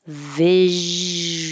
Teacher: Keep the airflow going and keep your voice on the entire time because you need good zh vibration for the zh sound. If not, it will turn into the sh visual.